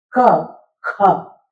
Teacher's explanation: जब आपने जिस तरह से गले से बोला ख, उसमें आप बाहर हवा में निकालते हैं।